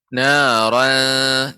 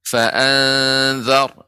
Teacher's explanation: Naran, ya, itu tipis Ibu. Fa'anzar, ya itu tebal ra-nya.